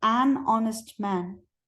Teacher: But we have to say an honest man because the H is silent.